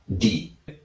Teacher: മുകൾ നിരയിലെ പല്ലിന്റെ പിൻഭാഗത്ത് മോണയുമായിട്ട് ചേരുന്ന ഭാഗത്ത് നാവിന്റെ അറ്റം കൊണ്ടുവച്ചിട്ട് ഡി എന്ന് പറഞ്ഞു നോക്കൂ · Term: ശരിയായ ഡി